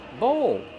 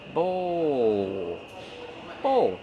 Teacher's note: use a long o like no and go plus the dark L